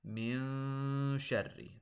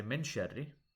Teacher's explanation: Notice that the noon, I'm holding in my nose a little bit.